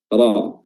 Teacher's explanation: Wa idza suhufu nushirat, ya, huruf ra-nya berharakat fathah dan dia dibaca dengan tebal, tafkhim